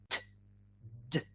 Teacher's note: the obstruction is created by the tongue touching your mouth behind your teeth